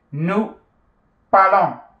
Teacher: the S is not heard. It becomes a nasal vowel, the O-N-S. Pa, pal, long.